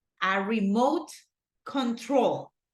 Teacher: the stress syllable goes in troll